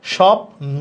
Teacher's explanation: শুরুতে থাকলে বয়ের উচ্চারণ হবে না। তার মানে এটা লেখা স্বপ্ন, তাহলে বফলার উচ্চারণ দেখো হচ্ছে না, স্বপ্ন।